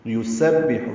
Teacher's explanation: سین صفیر کی آواز سے ادا کرنا ہے، با سے ملانا ہے، ہا وسط حلق سے ادا کرنا ہے۔